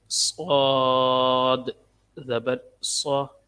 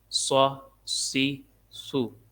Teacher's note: اس کو موٹا بھی پڑھنا ہے اور اس کے اندر سیٹی کی آواز بھی آئے گی